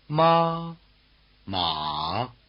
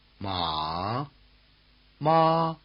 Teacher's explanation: The high tone is level as well as high, and the low tone is dipping as well as low.